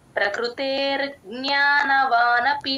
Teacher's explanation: ప్రకృతేర్ జ్ఞాన వానపి ప కింద రకారం ప్రకృ తేల్చి చెప్పాలి ప్రకృ అనకూడదండి ఉ సౌండ్ ఎప్పుడూ రాకూడదు కృ అంతే